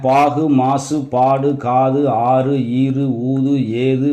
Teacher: இப்போ இந்த சொற்களுடைய கடைசி எழுத்து குசுடு துபுருல உள்ள எழுத்துக்களாக இருக்கிறதுனால இது தன்னுடைய ஒரு மாத்திரையிலிருந்து குறைந்த அரை மாத்திரையாக ஒலிக்கும் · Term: குற்றியல் உகரம்